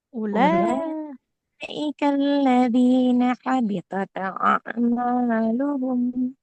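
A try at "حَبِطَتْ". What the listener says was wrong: Nah, nggak boleh habitat ya. Huruf tak sukunnya dia nggak boleh memantul. Habitat huruf tak dia mengalirkan nafas. Ulaika alladzina habitat a'maluhum.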